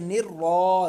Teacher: रा के ऊपर ज़बर आ रहा है इसीलिए रा को हम मोटा पढ़ेंगे